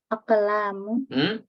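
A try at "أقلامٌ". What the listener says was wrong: Salah. Nah, pakai tanwin.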